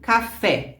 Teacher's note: no caso das oxítonas a sílaba mais forte é na na última sílaba e por exemplo café a fé é a última sílaba você